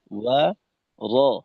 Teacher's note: ওয়াওয়ের প্রথম অংশে ঠোঁট গোল, জবরের কারণে শেষের অংশে ঠোঁট খোলা ওয়া, আর রয়ের উচ্চারণটা পরিপূর্ণ ঠোঁট খোলা রেখে র ওয়া র, যেন ও র র ঠোঁট গোল হয়ে না হয়, একটা বিষয়।